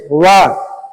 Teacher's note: ऐसे वर्ण जिनका उच्चारण मुख के दो अंगों की सहायता से होता है उन्हें द्विस्थान उच्चारण वर्ण कहते हैं। जैसे व ये दांत और ओष्ठ दोनों जगह से उच्चारित होते हैं।